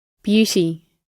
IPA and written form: ˈbjuːti (Beauty)